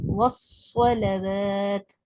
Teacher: صاد حروف صفیر یعنی سیٹی والا حرف ہے. یہ ساؤنڈ آف وسل، ساؤنڈ آف سیٹی کی جو آواز ہے یہ سنائی دینی چاہیے · والصلوات میں صوت کو موٹا پڑھنا ہے اور اس میں ایک آواز سیٹی کی بھی سنائی دینی چاہیے. والصلوات، صاد حروف صفیر یعنی سیٹی والا حرف ہے.